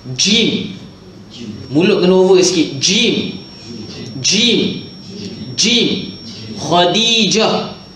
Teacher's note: Jim ni lidah berada di tengah lelangit. Dia termasuk dalam makhraj lisan.